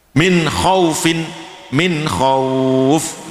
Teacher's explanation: Min khaufin menjadi khauf panjang. Khaufin asalnya tidak panjang ya. Khauf tidak panjang, tapi kalau khauf panjang.